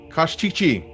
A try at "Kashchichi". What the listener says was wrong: Nope, too many E's. Kashchichi. Only the last E is heard.